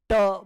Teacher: उच्चारण होगा ट बोलने के लिए मुझे ऊपर ले जाना पड़ा ट से आपका टंग ऊपर पैलेट में गया